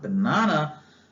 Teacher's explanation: the second syllable of the word banana is accented means you put more stress on it